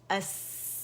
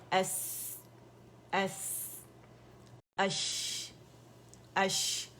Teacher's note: اس میں ہمس بھی ہے، اس میں وسلنگ ساؤنڈ بھی ہے، صفیر کہا جاتا ہے، چڑیا کی سی آواز